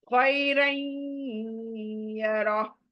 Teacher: यहाँ पर तनवीन के बाद या इदगाम आया, सो इदगाम विद गुन्ना, यानी नून नाक में आएंगी।